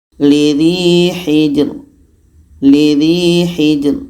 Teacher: ini dibaca tipis pangkal lidah tidak terangkat